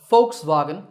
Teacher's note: the W sound in the second part of the name represents not a W sound, but a V sound. So Volkswagen is the correct way to say it.